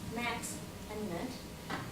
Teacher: The second syllables, though, in Max, it is stronger, it is perceived stronger than Mut, Max and Mut, because Max has a strong syllable, whereas Mut has a schwa, and we all know that schwa is weak.